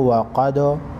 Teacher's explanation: वाव ज़बर व, क़ाफ दाल ज़बर क़दो व क़दो। दाल को हिला कर पढ़ेंगे, क़ाफ को मोटा पढ़ेंगे।